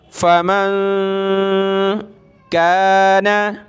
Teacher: यहाँ नून साकिन पर हम नाक में आवाज़ पैदा कर रहे हैं क्योंकि इसके बाद वाला वर्ड हुरूफ़ हल्की का कोई वर्ड नहीं है